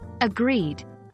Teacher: remember to stress the second syllable when saying agreed